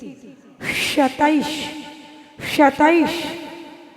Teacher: जो सक्कर वाला सा है ना उसको कैसे पढ़ना है शीटी आनी चाहिए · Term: सीटी